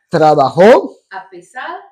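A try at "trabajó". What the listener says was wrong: Donc, trabajo. Pero trabajo con el acento. Trabajo. Trabajo, je travaille. Trabajo, il ou elle a travaillé.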